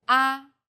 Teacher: The first tone is steady with a high pitch. · The fourth tone falls sharply and quickly from a high pitch.